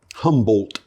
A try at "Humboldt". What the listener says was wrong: Pronounce that D. You got to pronounce that D.